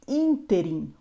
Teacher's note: uma palavra proparoxítona ou seja a antepenúltima sílaba é a mais forte